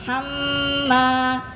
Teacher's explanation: Mim tasydid ya, hamma itu 2 ketukan. Hamma, bukan hamma.